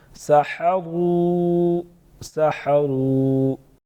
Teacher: سحروا، سحروا، را پر پڑھیں گے، واو مدہ ایک الف کے برابر، ساتھ میں چھوٹا مد 2 سے 3 الف کے برابر کھینچ سکتے ہیں